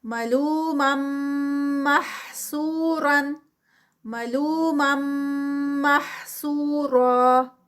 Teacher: یہاں پر غنہ ادغام ہے، ادغام ہو رہا ہے میم کا میم میں